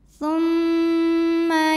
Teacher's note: Kemudian ada hukum gunnah musyaddadah karena mim bertasydid. Cara baca dengung, bunyi m tahan sampai ada getaran halus ke hidung.